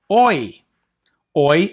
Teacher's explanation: combination of the O and the E sound. So if you blend them together, O, E, they become Oi. Oi as in foil or oil.